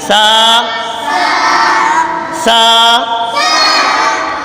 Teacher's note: سا کا مخرج زبان کا سرا اور اوپر کے دانتوں کے اندرونی کنارے سے سا ادا ہوتا ہے۔ زبان کا سرا یہ اور اوپر کے دانتوں کے اندرونی کنارہ، اندرونی جو کنارہ ہے اس سے جب زبان کا سرا لگتا ہے تو یہ سا ادا ہوتا ہے۔